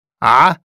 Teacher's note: in Arabic, the city of Amman begins with the guttural sound.